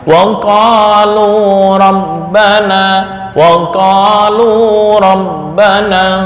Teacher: Kepanjangan antara ko dan lu ukurannya sama, 2 harokat.